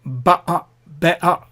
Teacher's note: So better is be'a and butter is ba'a. So that there's a glottal stop in between